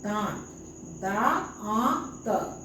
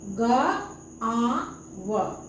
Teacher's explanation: लेकिन अनुनासिक, इसका ध्वनि नाक, मुंह से तो बोलना ही है, उच्चारण करना है, तो मुंह से तो ध्वनि निकलेगा ही, साथ साथ उसके पीछे नाक से भी ध्वनि निकलेगा, नाक और मुंह दोनों से ध्वनि निकलेगा